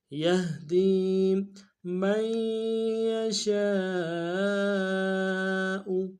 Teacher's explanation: شین کے ساتھ الف مدہ، الف مدہ کے اوپر مدہ اصلی ہے، کم سے کم 3 دال میں کھینچیں گے